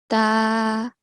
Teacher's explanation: it has a vertical fatha. So we are going to prolong this for 2 seconds.